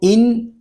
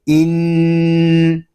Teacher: نون مشدد ہے، اس میں شروع ہی سے غنہ کریں گے کیونکہ نون مشدد اور میم مشدد میں ہمیشہ غنہ ہوتا ہے۔